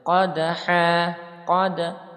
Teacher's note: mantul karena dia qalqalah sughra ya. Mantulnya pelan saja.